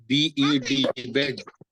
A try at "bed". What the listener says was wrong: माशाल्लाह।